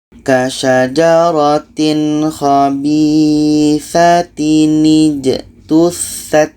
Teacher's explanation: Cara bacanya, tanwin ini kita buang barisnya satu, kita ganti dengan nun yang berbaris di bawah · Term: nun wiqayah